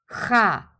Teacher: Try to get the H sound in the very back of your throat.